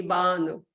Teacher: We stress the first syllable.